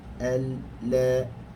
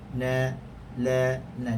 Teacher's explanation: hujung lidah ni dia menyentuh, keluar padanya huruf lam. Al, la. Tetapi berganjak sedikit saja ke belakang.